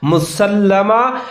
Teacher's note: مسلمہ لام پھر مشدد ہے، سین کے ساتھ ملا کر پڑھنا ہے مضبوطی کے ساتھ۔ مسلمۃ اللہ، تا کے اوپر تنوین ہے، دو پیچ آگے لام پھر مشدد ہے، ملا کر پڑھنا ہے۔